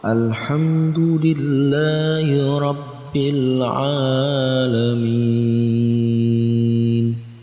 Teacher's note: kita membacanya 6 harakat sama dengan ayat yang sebelumnya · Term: Mad Arid lissukun